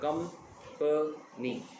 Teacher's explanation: आपने लॉन्ग भी किया उसको, लाउड भी किया है और पिच भी आई है आपके जो फर्स्ट आपका syllable है कंपनी. पिच भी नीचे जाती गई है, लाउडनेस भी कम होती गई है और उसकी जो लेंथ है प्रोनाउंस करने की वो भी कम होती जा रही है.